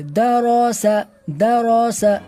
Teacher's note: دال کو بھی باریک اور سین کو بھی باریک، صرف را کو پر کر کے پڑھیں گے